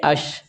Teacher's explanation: یہ اب شین غیر قلقلہ ہے، اس کے اوپر جزم کی علامت آ گئی ہے تو یہ اس کو بغیر جنبش کے ساتھ پڑھیں گے